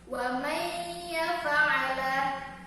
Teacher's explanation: sukun bertemu dengan huruf ya, sehingga menghasilkan satu huruf yang bertasydid